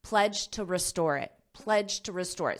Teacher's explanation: when you connect it to the next sound you may not hear that D